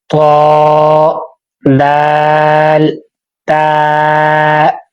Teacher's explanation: زبان کی نوک اوپر سامنے والے دو دانتوں کی جڑ سے ادا ہوتے ہیں۔